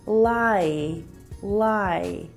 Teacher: in the word lie you can hear both the i and e vowel sound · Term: diphthongs